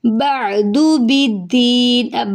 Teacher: عین حلق سے ادا ہوگا، دال کی پیش کو لمبا نہیں کریں گے، بالدین، باقی زیر کو دال سے ملائیں گے، دی پہ جائے مدہ ہے اس کو ایک الف کے برابر لمبا کریں گے، بالدین، ٹھیک ہے۔